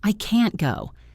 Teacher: In I can't go, the can't is fully pronounced with a clear vowel sound.